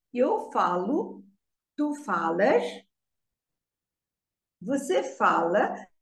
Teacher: the stress is on the before last syllable